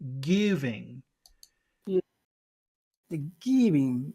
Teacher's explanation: normally the word giving you emphasize just the give part